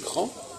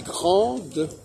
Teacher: Au masculin, on prononce la diphtongue en. Au féminin, on n'est pas censé prononcer la diphtongue en, on est censé prononcer la consonne.